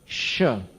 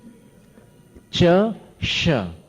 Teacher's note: इसको तालव्य श बोलते हैं, तालु पर जोर पड़ता है।